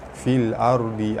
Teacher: alif lam bertemu hamzah, alif lam qamariyah, lam dibaca jelas. Ra mati, sebelum dia ada huruf yang berbaris atas, ra dibaca tebal.